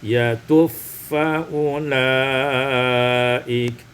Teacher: Pada ayat yang ke-11, yatuba faulaik, yakni idghamul ba fil fa, diidghamkan ba pada fa maka menjadi yatufaulaik.